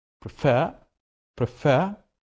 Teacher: because it is two-syllable verb but the stress is in the second syllable